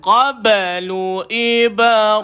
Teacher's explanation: Maka naikkan lidah, jangan keluar air, jangan keluar angin. Qaba ada qalqalah, berlaku lantunan.